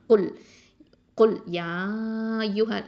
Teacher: அப்போ நாவுடைய கடைசி பகுதி அக்கசல் லிசான்லேருந்து இந்த காஃப் வந்து வரணும்.